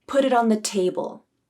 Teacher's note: And table used the true T.